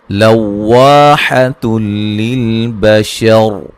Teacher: लव्वाहतुल लिल बशर, लव्वा वा अलिफ मद्दा, हतुल यहाँ नून तनवीन का इदगाम है लेकिन बिला गुन्ना, गुन्ना नहीं करेंगे